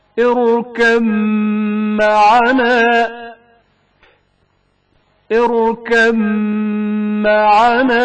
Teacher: بائے ساکن کا میم متحرک میں ادغام کا مقام. اركب معنا اركب معنا.